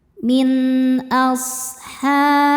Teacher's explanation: Artinya ada suara berdesis seperti suara angsa. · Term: shofir